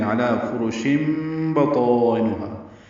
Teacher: تنوین کے بعد بان کی وجہ سے اقلاب ہوگا شن میں، اور شن کی جگہ شم پڑھ دیں گے